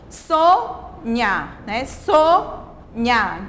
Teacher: essa primeira sílaba foi pronunciada com mais força com mais intensidade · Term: sílaba acentuada